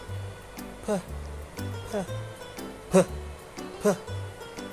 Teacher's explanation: You cannot feel the vibration in your neck. That is why it's called voiceless.